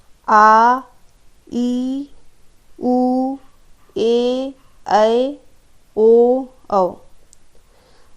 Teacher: दूसरा है दीर्घ स्वर। वे स्वर जिनका उच्चारण करने में 2 मात्रा का समय लगे